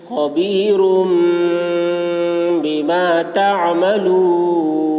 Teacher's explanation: تنوین کے بعد با آ رہا ہے، اس لیے تنوین کو میم سے بدل کر غنہ اور اخفا کے ساتھ پڑھیں گے. اس کو اقلاب کہتے ہیں.